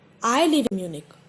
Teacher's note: But if you say, I live in Munich, here I is important. Not anyone else. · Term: stress